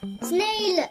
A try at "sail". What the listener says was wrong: No. Where is the letter N there? Say properly.